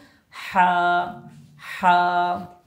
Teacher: হা উচ্চারণের সময় গলার ভিতর থেকে আওয়াজটা হবে এবং শোষ আওয়াজ হবে